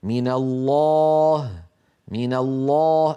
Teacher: اللام في لفظ الجلالة في كلمة الله مفخمة